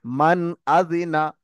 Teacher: মান আদিনা, একটুও দাঁড়ালাম না, সঙ্গে সঙ্গে তাড়াতাড়ি পড়ে গেলাম। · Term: ইজহার